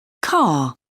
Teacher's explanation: If the word ends in R or R E, some varieties of English don't pronounce the R, making the last sound a vowel